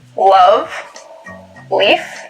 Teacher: One remarkable feature of this variety is a light L, the sound that you would find in a word like, love, leaf.